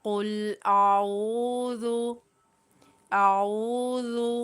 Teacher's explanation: بہت سارے لوگ آؤ پڑھ جاتے ہیں، اعوذ، یعنی عین کو حلق کے درمیان والے حصے سے ادا کرتے ہوئے، یہاں پر واو مدہ ہو رہی ہے تو عین کو ایک الف کی مقدار کھینچتے ہوئے پڑھنا ہے۔ یہ حمزہ ہے، اس کو بغیر کھینچے پڑھنا ہے، اور عین کو ایک الف کی مقدار کھینچتے ہوئے پڑھیں، ذال کو نرمی کے ساتھ پڑھتے ہوئے بغیر کھینچے پڑھنا ہے۔